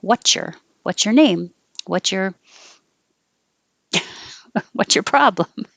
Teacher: the t and the y together make a cha sound